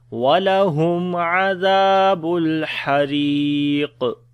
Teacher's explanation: On the qaf we read heavy sound and we make qalqala if we stop